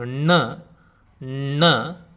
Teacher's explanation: while pronouncing N, N, the tongue has to curl backwards